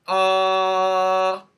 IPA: ɑ: